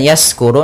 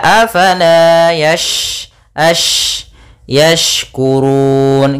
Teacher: huruf shin ada sifat tafasyi, yaitu intisyarus sauti fil fam, yaitu menyebarnya suara di dalam mulut